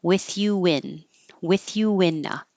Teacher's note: but if you want to keep the U with you now your lips are rounded and when you go unrounded for the in it'll make an invisible W